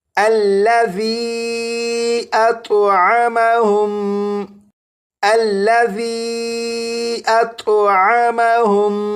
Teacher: اس لفظ میں آپ دیکھیں یہاں پر مد منفصل کی علامت ہے، تو اسے 2 یا 2.5 الف کے برابر کھینچ کر پڑھیں گے۔ یہاں پر میم ساکن کے بعد دوسری میم ہے تو یہاں پر غنہ بھی کریں گے